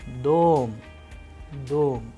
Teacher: in the word dom, the sound of O is higher than the rest of the letters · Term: stress